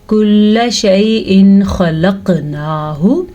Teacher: حروف ہلکی میں سے کوئی حرف آ جائے اس کے بعد تو نون ساکن یا نون تنوین کو ظاہر کر کے پڑھیں گے، کسی قسم کا کوئی غنہ نہیں کریں گے، کوئی اخفا نہیں کریں گے. · یہ 6 حروف ہلکی ہیں تو یہ خا ہے. اس خا کی وجہ سے نون تنوین کو ہم ظاہر کر کے پڑھیں گے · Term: اظہار